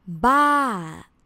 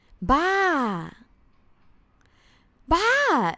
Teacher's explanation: the word it's crazy in thai is ba with the falling tone